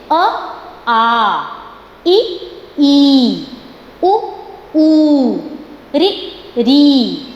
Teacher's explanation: जब मैंने ह्रस्व स्वर बोले तो उनको बोलने में मुझे थोड़ा कम समय लगा, लेकिन उसके विपरीत, उसके ऑपोजिट जब मैंने दीर्घ स्वर बोले तब क्या हुआ, उसको बोलने में मैंने थोड़ा सा ज़्यादा समय लिया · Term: ह्रस्व एंड दीर्घ